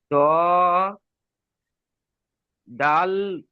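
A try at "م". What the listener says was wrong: দাল নয়, মিম মিম, ত মিম তা।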